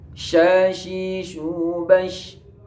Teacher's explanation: Keluar tepat di tengah-tengah lidah serta menepati dengan langit-langit mulut atas. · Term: syajariyah tengah lidah